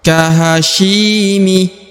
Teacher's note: huruf syi dibaca Dua harakat ya karena di depan huruf syi terdapat Ya Sukun ya atau ya mati yang merupakan tanda bacaan dua harakat kahyimi